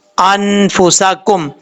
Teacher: نون ساکن کے بعد فا آ رہا ہے, تو یہاں پر اخفا ہوگا نون ساکن کا, 1 الف کی مقدار غنہ کر کے پڑھا جائے گا